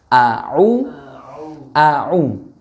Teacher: tidak ada udara yang menghembus ketika kita melafalkan huruf ain dan agak ditekan